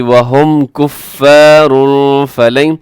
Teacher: کفارن کے آخر میں تنوین کے بعد فا تو اخفا کریں گے